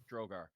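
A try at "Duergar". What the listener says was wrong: Durgar. There's no R at the beginning. It's at the end. Durgar.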